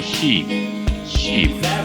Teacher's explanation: This is articulated in the front part of the vowel tract, the tongue close to the roof of the mouth, and the lips is pressed. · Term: long E